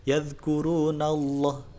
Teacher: lam tebal itu lemnya dibaca tebal sampai seolah-olah mulut kita penuh dengan huruf lam tersebut